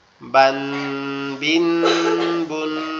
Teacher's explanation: নুন সাকিন তানবিনের ভিতরে লুকিয়ে থাকে, যেমন বা আলিফ 2 জবর বান, এখানে দেখেন একটা নুন কিন্তু গোপন ভাবে উচ্চারণ হচ্ছে, বা আলিফ 2 জবর বান, বা আলিফ 2 জবর বান, বা 2 জের বিন, বা 2 পেশ বুন, বান বিন বুন, ঠিক আছে, এভাবে উচ্চারিত হচ্ছে।